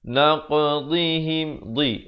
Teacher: dad makhrajnya di tepi lidah